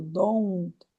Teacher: Don't é assim. Não é um O, é ou. Aqui dentro tem um ditongo.